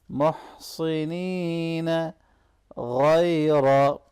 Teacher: गैन को मोटा पढ़ेंगे, या लीन को नरमी से मिलाएंगे।